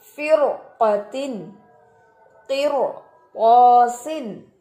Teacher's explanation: रॉ साकिन मा कबल कसरा मा बाद हर्फ मुस्तालिया, ये रॉ भी मोटा पढ़ा जाता है